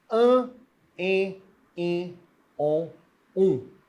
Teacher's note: o ar ele sai pela boca e pelas fossas nasais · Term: vogais nasais